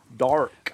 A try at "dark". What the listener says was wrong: It's like you're saying the word dar with a K on the